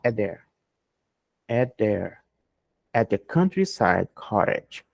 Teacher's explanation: Terminou com T, começou com T, eu corto um. Eu não vou falar at there, ok?